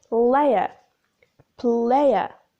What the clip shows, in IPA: 'leɪə